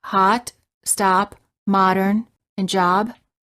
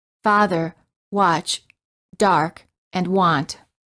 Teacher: For the a sound, the lips are apart as if you're yawning. The lips are not rounded. The tongue is relaxed and flat at the bottom of the mouth. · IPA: /ɑ/